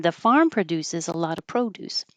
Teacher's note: I might say the farm produces put stress on Farm